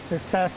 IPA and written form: səkˈses (success)